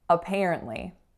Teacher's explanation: The first letter A is making a schwa again